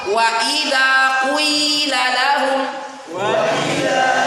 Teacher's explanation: penggabungan atau mixing antara ya dengan wau wau dibaca lebih awal 1/3 takarannya sedangkan ya dibaca sisanya 2/3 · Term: ya ismam